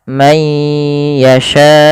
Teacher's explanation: teman-teman. Masukkan kemudian ditahan suara ya-nya. Mayya ya mayya may yasyau panjangkan sya empat harakat atau lima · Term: mad wajib muttasil